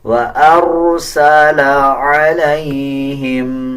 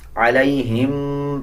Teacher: وَأَرْسَلَ عَلَيْهِمْ، اکثر لوگ اس میں غنہ کرتے ہیں، علیہم پڑھ دیتے ہیں، اس میں غنہ نہیں کیا جائے گا بلکہ جلدی کے ساتھ اس کو ادا کیا جائے گا